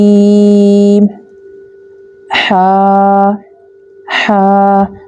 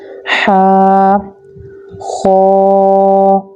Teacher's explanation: This letter comes from the middle part of the throat.